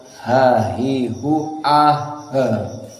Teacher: ada he keluar dan ini dinamakan dengan sifatul hams